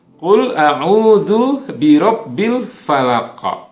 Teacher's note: ini diakhiri oleh huruf qaf ya yang adalah merupakan salah satu dari huruf qalqalah. Jadi harus dipantulkan.